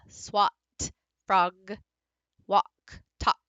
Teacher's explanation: you have a lot of stops that follow that short ah